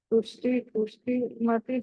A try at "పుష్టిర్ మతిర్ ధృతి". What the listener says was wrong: పుష్టి తర్వాత ఏముంది మీకు పుష్టి, అక్కడ విసర్గ ఉంది కాబట్టి తర్వాత పా ఉంది కాబట్టి దాన్ని సగం విసర్గ పలకాలి. తుష్టి పుష్టిర్ మతిర్ ధృతి. అన్ని అక్షరాలు సగం అక్షరమైన పూర్తి అక్షరమైన స్పష్టంగా వినిపించాలి వినేవాళ్ళకి. ఓకే, మళ్ళీ తుష్టిఫ్ పుష్టిర్ మతిర్ ధృతి.